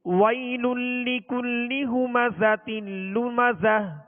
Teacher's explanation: زا کو سختی کے ساتھ سیٹی کی آواز میں ادا کریں گے